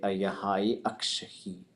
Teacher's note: Lingít forces you to stop at that vowel before you start the next one.